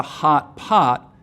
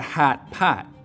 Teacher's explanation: in chicago it's not a hot pot it's a hat pat